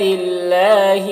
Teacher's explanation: یہاں پر اللہ کے لام کو باریک پڑھیں گے، کھڑا زبر ہے، 1 الف کے برابر کھینچیں گے.